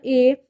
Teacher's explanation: यह जो होता है ना ए, यह अ प्लस ई से मिल के बनता है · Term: संयुक्त स्वर